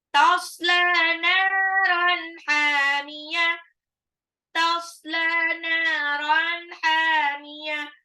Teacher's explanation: Tanwin ketemu ha-nya nggak boleh ditahan karena dia izhar, jelas. Hamiyah, ha-nya 2 harokat. Mad tabi'i.